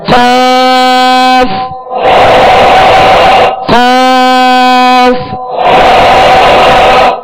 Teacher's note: زبان کی جڑ اور تالو کا نرم حصہ، اس سے قاف ادا ہوتا ہے جو پر پڑھا جاتا ہے